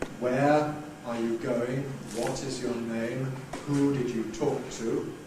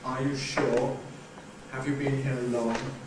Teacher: the default, that's the expected value of intonation pattern, is a Fall with a Wh-question but a Rise with a Yes-No question